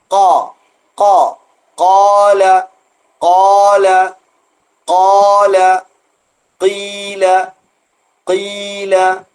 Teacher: ക എന്ന് അല്പം ഉരുണ്ടാണ് വരുക എന്നാൽ ചുണ്ട് കൂട്ടരുത് ചുണ്ട് കൂട്ടിയോ കൂട്ടിയോ പിടിക്കരുത് ചുണ്ട് കൂർപ്പിക്കരുത് കാല കാല കാല കീല കീല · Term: ഹെവി ലെറ്റർ